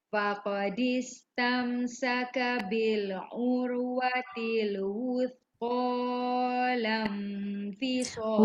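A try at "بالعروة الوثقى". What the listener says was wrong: Wuthqa tu jangan panjang sangat. Bil urwatil wuthqa lan fisama laha. Salah baris. Bil urwatil wuthqa lan fisama laha. Habiskan ni.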